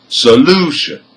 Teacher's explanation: the stress is on the second syllable, which is the second from the end, because it has 3 syllables